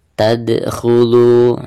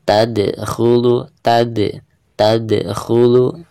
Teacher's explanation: huruf dal ketika sukun maka dihukumi qalqalah, dan cara membacanya yaitu harus ada pantulannya.